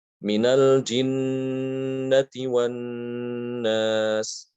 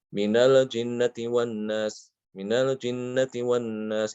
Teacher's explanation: Jangan terburu-buru ketika mengucapkan nun dan mim yang bertasydid, tapi ditahan gunahnya. Ditahan suara dari hidung. Ya. Guna itu suara dari hidung.